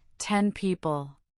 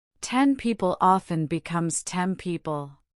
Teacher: But what happens when is followed by a sound made with the lips like porb then often assimilates to because m is also a bilabial sound. Your tongue prepares for the bilabial sound by making the preceding sound bilabial too. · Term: assimilation